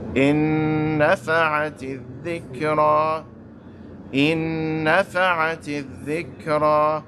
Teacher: I'm holding the noon for 2 harakas.